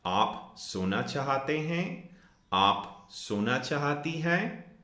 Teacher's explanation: This is only if kya comes before our pronoun, before you, kya aap, we can drop that kya and still have that rising intonation. Therefore, we know that this is a question.